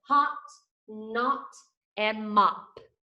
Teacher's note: short O says ah, ah. Look how wide and open my mouth is. Ah, and my tongue is flat, ah.